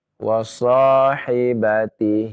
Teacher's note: Hi-nya itu dipanjangkan ya. 2 harokat.